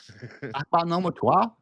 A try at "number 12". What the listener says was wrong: You pronounced your R so you know you're wrong.